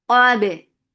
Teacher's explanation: Qaf is heavy for fatha open jaws attached ba. Give a very crispy qalqala here.